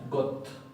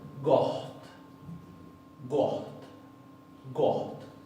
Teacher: acá hay un ejemplo muy claro de cómo la doble T se va a pronunciar como HT.